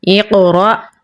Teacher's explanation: حمزہ کے اوپر جزم ہے، تو ہم اسے جھٹکا لگا کر پڑھیں گے · حمزہ کو قاف کے ساتھ ملائیں گے کیونکہ اس کے اوپر جزم ہے، اسے پر یعنی موٹا پڑھیں گے۔ ساتھ میں قلقلہ ہو رہا ہے لیکن کمزور قلقلہ ہوگا۔